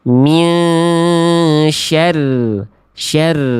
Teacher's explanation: Jadi yang tepat yang A min syar syar ada getarannya tapi enggak berlebihan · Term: ro tasydid